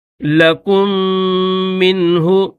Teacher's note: پہلا میم چھوڑ کر دوسرے میم کو پڑھیں گے، کاف کو دوسرے میم کے ساتھ ملائیں گے